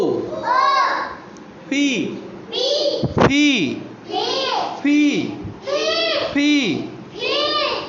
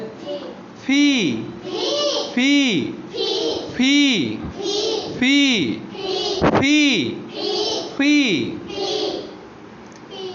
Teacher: দুই ঠোঁটের মাঝখান দিয়ে বাতাস বের হতে হবে